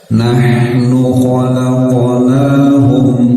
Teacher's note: ha sukun tekan sedikit, alirkan saja dan jangan terputus suaranya